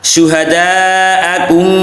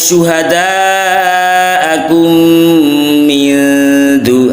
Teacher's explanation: ada mim sukun bertemu mim, ya, ini ada idgham misli, juga ada gunnah